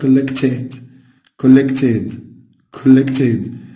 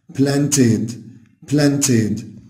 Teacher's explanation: عارفين إن الـ ed بعد الـ t sound بتنطق ed